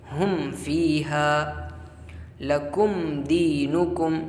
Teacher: میم ساکن کے بعد نہ میم ہے اور نہ با ہے، بلکہ فا آیا ہوا ہے، تو میم کو ظاہر کریں گے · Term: اظہار شفوی